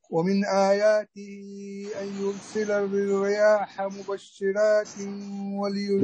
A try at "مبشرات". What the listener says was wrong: لا لا لا لا، فخم الله يرضى عليك. أعد.